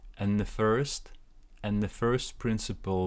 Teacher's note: we cancel this D here because N is a strong sound, and we link and with the. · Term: linking